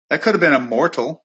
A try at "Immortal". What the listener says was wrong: How come you pronounce the T a lot? It's like Immorch, like Immortal instead of like Immortal.